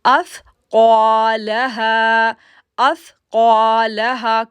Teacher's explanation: جیسے زال کو نرمی کے ساتھ پڑھا جاتا ہے اپنی زبان کو باہر نکال کر، اسی طرح سا کو بھی نرمی کے ساتھ پڑھا جاتا ہے۔ تو ہم پڑھیں گے اثقالہا، اثقالہا۔ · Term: سافٹ لیٹر